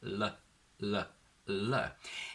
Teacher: the clear normal L, where the tip of your tongue touches the back of your top teeth, L, L, L, here the tongue curls against your alveolar ridge.